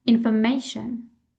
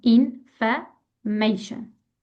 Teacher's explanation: information, the stress is on the third syllable. Information, third syllable.